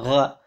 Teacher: biasanya tahu G ini untuk gha, dia agak ada anginnya